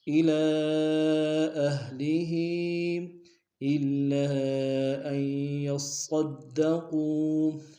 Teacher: الا میں لام پر کھڑا زبر ہے اور مد منفصل ہے، کم سے کم دو الف دار میں کھینچیں گے ، اہلی کے نیچے بھی کھڑی زیر ہے اور مد منفصل